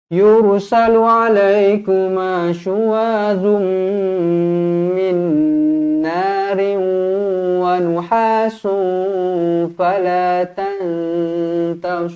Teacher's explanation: ikhfa hakiki dengan idgham ma'al gunnah kena baca dengung 2 harakat